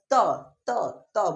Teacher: है जो जीव है वह दांत से आकर टकरा रहा होगा यानी जो त वर्ग है उसका उच्चारण स्थान क्या है दांत है · जो आपका जिहा है जो जीव है वह दांत से आकर टकरा रहा होगा